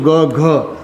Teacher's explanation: કરો છો ને તો ત્યારે એક રણકોષ સંભળાય અવાજ ઘેરો બને અવાજ કેવો બને ઘેરો બને એક રણકો સંભળાય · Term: ઘોષ